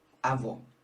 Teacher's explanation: o circunflexo representa o som fechado, como é o caso do avô